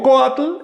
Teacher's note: Si digo coatl, el acento recae sobre la o. Pero si le añado esa i del sufijo tli, tendría que decir coatli y el acento se traslada y entonces aumenta una sílaba la palabra.